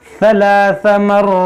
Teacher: यहाँ पर देखेंगे सा है, इसको बाज़ लोग सीन पढ़ते हैं सलासा, तो सलासा नहीं पढ़ना है, सलासा नरमी से, सीटी ना हो इसमें। सलासा मर्रात, रा को मोटा पढ़ेंगे, 2 बार पढ़ेंगे और इस पर खड़ा ज़बर है, यहाँ पर रुकेंगे तो दो को साकिन करेंगे, तो यहाँ मद्दे आरिज़ भी होगा, खींच कर रुकेंगे।